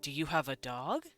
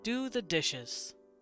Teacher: our questions go upward and when we command we go lower